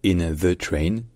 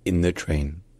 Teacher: lorsque le mot d'avant termine par un N le TH devient un N aussi · Donc par exemple, lorsque le mot d'avant se termine par un N, le th devient un N aussi. Donc par exemple, on dit pas trop in the train, on dit plutôt in the train.